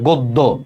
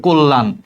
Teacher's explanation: আদ্য অ এর পরে জ ফলা যুক্ত ব্যঞ্জন বর্ণ থাকলে অ এর উচ্চারণ হচ্ছে ওর মতো হয়